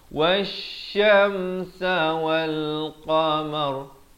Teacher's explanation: Kalau waqaf mar jadi tebal